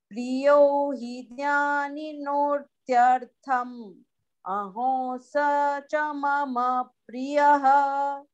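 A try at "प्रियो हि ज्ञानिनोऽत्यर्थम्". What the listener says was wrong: Priyo hij jnani no, because jna is conjunct consonant, so ja will be pronounced twice.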